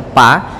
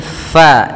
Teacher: jangan dibaca pa tapi fa, alirkan nafas kita